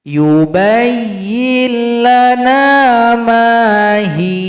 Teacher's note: huruf ha yang mendahuluinya dengan kasrah menjadi mad asli atau madilah. Berdurasi dua ketukan.